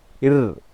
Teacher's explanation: இந்த நாக்கு நுனினா நுனி எண்ணத்தை வருடுகின்ற பொழுது, தேய்க்கின்ற பொழுது பிறக்கும் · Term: வருடொலி